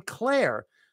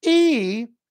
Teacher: it's a very high e vowel I call it the high e where you have to like squeeze it e and then you go to the final R clear and